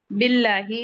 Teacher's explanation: लाम जलाला को बारीक पढ़ेंगे क्योंकि उससे पहले कसरा आ रहा है। लाम पे फतह मुस्तकीमा है, टू काउंट पढ़ेंगे।